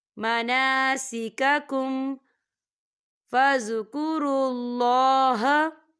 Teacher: یہاں پر میم ساکن ہے اور میم ساکن کے بعد فا آ رہا ہے تو یہاں پر اظہار شفی ہو رہا ہے تو ہم یہاں غنہ بالکل نہیں کریں گے، ہم اسے غننے کے بغیر پڑھیں گے۔